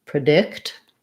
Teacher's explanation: contradict different syllable stress we have there so predict um [Music] your stress is on the dict syllable and so the pre sounds like pra